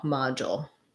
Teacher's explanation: in American English, module, this du, we do a j sound. And then we have our dark L at the end with a little bit of a schwa, module.